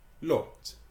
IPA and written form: lɒt (lot)